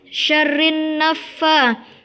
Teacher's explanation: ada lam ta'rif bertemu dengan huruf nun, maka cara membacanya harus dimasukkan ke huruf nunnya